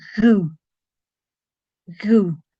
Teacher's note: it's like a G sound, but you let a little bit of air through it.